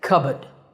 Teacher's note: If you're more into British English, you can drop the R and say cupboard.